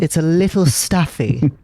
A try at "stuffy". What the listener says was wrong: Staffy? But you said staffy, like a staff.